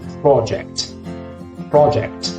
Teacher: the very special sound in British English is a rounded vowel